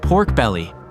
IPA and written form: ˈpɔːrk ˌbel.i (Pork belly)